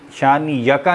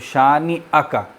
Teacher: نون کے بعد حمزہ کو ظاہر کریں گے